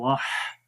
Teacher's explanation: हा के अंदर हम्स होता है, सिफ्ते हम्स है, सांस जारी रहता है, वाह ऐसे। वहदहु सिफ्ते रखावत भी है, वाह आवाज़ भी जारी हो रही है।